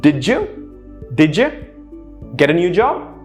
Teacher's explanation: notice how didja is one sound and get a new job is another sound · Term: linking